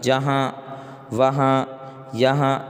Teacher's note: سب کی آواز ناک میں جا رہی ہے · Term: نون غنہ